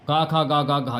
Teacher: का उच्चारण स्थान कंठ है